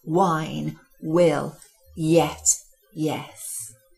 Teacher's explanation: the mouth has to do an awful lot of work now consonants W and Y almost become part of the vowels which they associate